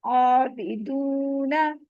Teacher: अब यहाँ पर अलिफ है, उससे पहले जबर आ रहा है, अलिफ मद हो रही है, यहाँ पे भी टू काउंट स्ट्रेच करेंगे। वाव साकिन है, उससे पहले पेश आ रही है, यहाँ भी वाव मद हो रही है, टू काउंट स्ट्रेच करेंगे।